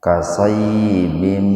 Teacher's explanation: Kasayyibim idgham bigunna, kasratain ketemu dengan mim secara terpisah. Jadi hukum tajwidnya itu idgham itu dimasukkan ke mim dengan mendengung. Bim tahan dua ketukan itu.